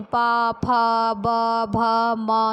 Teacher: पा वर्ग में दोनों होठ हमारे क्या है? आपस में टच होते हैं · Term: ओष्ठ से उच्चारित वर्ण